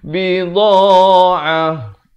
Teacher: Dha makhrajnya di tepi lidah ni, kanan ataupun kiri mengikut keselesaan tuan-tuan dan puan-puan. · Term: huruf dha